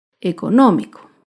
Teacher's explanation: Económico se acentúa en la antepenúltima sílaba. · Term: palabra esdrújula